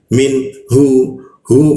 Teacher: Min hu posisinya di tenggorokan bagian bawah. Min hu masuk ke mim.